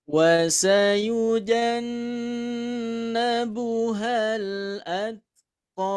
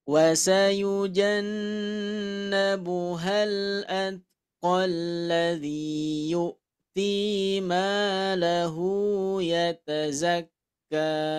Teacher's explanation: Dibaca panjang 2 harokat karena berhenti. Tapi dibaca pendek ketika diwasolkan. Ketika disambungkan sama kalimat selanjutnya, maka ko yang asalnya panjang menjadi pendek.